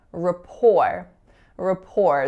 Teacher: in this word the stress falls on the second syllable